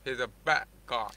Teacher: Do you know why I'm omitting the D? Because there is glottal stop.